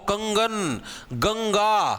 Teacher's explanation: सिर्फ नाक के अंदर से हवा आएगी उसको अनुस्वार बोलते